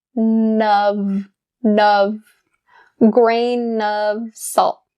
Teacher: Grain of. That N sound is brought over to of. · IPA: /nəv/